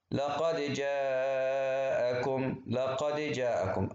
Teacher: أول ما نوصل الكلمتين في بعض يصير اسمها هذه الدال الساكنة فيها قلقلة صغرى